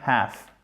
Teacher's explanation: on enlève tout simplement le L, ce qui nous donne half, en American English